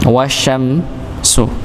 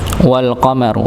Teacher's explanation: Kalau alif lam syamsiyah ya, maka langsung masuk kepada huruf yang bertasydid. Maka maka yang tidak dibaca ada dua yaitu hamzah dan lam.